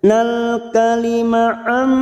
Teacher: nun sukun bertemu mim idgham bi gunnah masuk dan mendengung dan ditahan selama 3 harakat